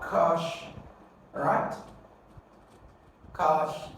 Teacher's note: So you're going to stress the first syllable.